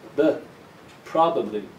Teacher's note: probably this first syllable is the strong one so the ba of the second syllable becomes weak